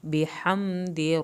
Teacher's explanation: हा को हल्क से पढ़ें, मीम नहीं ले, दाल की ज़ेर को लंबा नहीं करना।